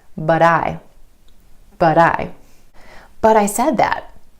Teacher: A recap on flap T or the D sound. You're going to hear this quick D sound when the T comes between two vowel sounds, whether that's within a word or in between two words. · instead of that true T at the end of the word but try the flap T